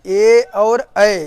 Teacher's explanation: ए और ऐ इनका उच्चारण स्थान कंठ और तालु है